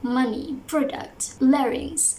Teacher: so the stress will be on the first syllable